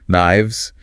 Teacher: Plural of knife. Notice the F changes to a V sound.